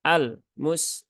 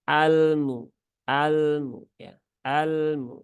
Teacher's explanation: lam itu sifatnya tawasut ya bukan syidah · jangan disyidahkan tapi tunaikan tawasutnya ya artinya dialirkan sedikit saja